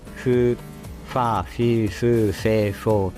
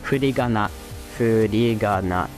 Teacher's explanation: pra gente fazer o fu do japonês, a gente precisou de fu, dois lábios, e soltou o ar